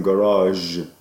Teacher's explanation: that's voiced postalveolar or voiced palatal fricative